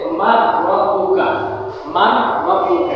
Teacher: যেমন উচ্চারণ হবে মান রাব্বুকা, মান রাব্বুকা। এখানে কোনো গুণনা করা হয় নাই কিন্তু ইদগাম হয়েছে, যেহেতু এই রটা গুণনা ছাড়া ইদগামের হরফ। · নুন সাকিনকে র এর সাথে মিলায়া সন্ধি করে বলবো, ঠিক আছে, কিন্তু গুণনা হবে না। যেমন উচ্চারণ হবে মান রাব্বুকা, মান রাব্বুকা।